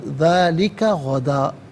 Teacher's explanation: غدن یہاں وقف پڑھیں گے تو غدا پڑھیں گے